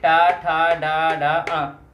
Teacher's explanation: बोलने के लिए मूर्धा का उपयोग किया जाता है तो उनको क्या जाता है? मूर्धन्य वर्ण बोला जाता है